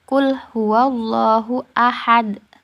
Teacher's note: huruf Dal dibaca Sukun dan memantul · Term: qolqolah kubro, qalqalah